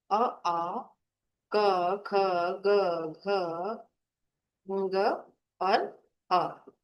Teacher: सबसे पहले जो आए हैं स्वर वो है कंठ, यानी गले से।